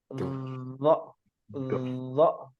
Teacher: Punggungnya ujung lidah ya pada posisi menempel di ujung dua gigi seri atas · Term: huruf dha